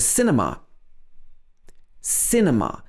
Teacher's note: we stress the first part of the word cinema